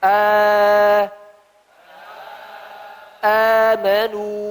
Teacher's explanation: Ya, alifnya dari aljauf, dari rongga. Berarti ketika A di sini ada dua makhraj, makhraj tenggorokan dan makhraj jauh.